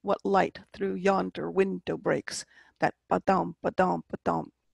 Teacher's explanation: starting with the iamb, the unstressed, stressed. It has 2 syllables